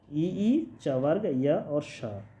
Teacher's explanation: तालू से बोले जाने वाले इ ई च वर्ग य और श ये सभी तालू से बोले जाएंगे